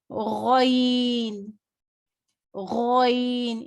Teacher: یہ موٹا حرف ہے، اسے منہ بھر کے پڑھیں گے